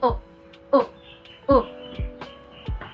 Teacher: closed back rounded vowel. So instead of O, it's U.